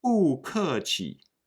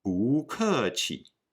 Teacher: The rule is when 不 is followed by a fourth tone, or falling tone, syllable, 不 become a second tone or rising tone syllable.